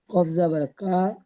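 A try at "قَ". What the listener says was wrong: কা নয়, কব জাবার ক।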